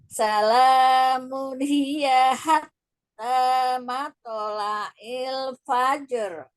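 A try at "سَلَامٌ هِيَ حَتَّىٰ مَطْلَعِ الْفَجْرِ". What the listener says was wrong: Iya, coba Eyang ngajinya jangan ditamtiok. Tamtiok itu memanjangkan harokat. Fajr. Nah, salah. Nah, jadi itu hilangin. Salamun mun ketika dhammah jelaskan n-nya. Salamun hiya hatta matla'il fajr. Terus jangan salaman, tapi un. Salamun hiya hatta matla'il fajr.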